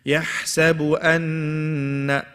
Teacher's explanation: I stretched the alif. You don't stretch it. You straight away do gunna.